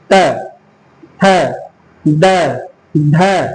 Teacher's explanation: जब आप बोलते हैं तो आपकी जीभ ऊपर वाले दांत से टच होती है।